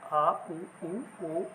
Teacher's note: तीसरा है पश्च स्वर। जीभ के पिछले भाग से इसका उच्चारण होता है और उनकी संख्या छह है।